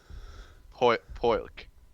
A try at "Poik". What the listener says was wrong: You don't pronounce the L.